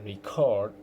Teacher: the stress on the second syllable, I'm using it as the verb